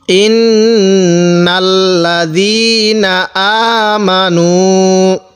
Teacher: এখানে এক আলিফ টান দিব পেশের বামে ওয়াও সাকিন থাকার কারণে। যখন দেখব পেশের বামে ওয়াও সাকিন, তখন সেখানে আমরা এক আলিফ টান দিব।